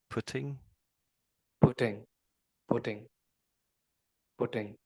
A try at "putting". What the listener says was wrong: There's another one of the situations where you're rushing it very very slightly. So, just just slow down a little bit